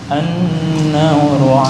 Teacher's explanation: ini nun yang bertasdid. Bacaan gunnah ditahan 2 ketukan.